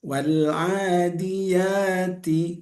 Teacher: Jadi ujung lidah, letaknya ujung lidah ketemu dengan gigi atas, bagian belakang ta. Nah, itu hurufnya tipis. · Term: huruf ta